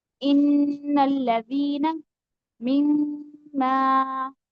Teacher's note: जब भी हम नून मुशद्दद और मीम मुशद्दद को प्रोनाउंस करेंगे तो उनको पढ़ते हुए हमेशा गुन्ना किया जाएगा